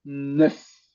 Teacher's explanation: Recuerda que la EU vas a hacer una boca de O y adentro dices una E